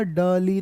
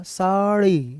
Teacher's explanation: मैं कहूंगा डली तो बड़े आराम से आएगा ड, लेकिन जैसे ही मैं ड़ बोलूंगा तो जीभ बड़ी झटके से आएगी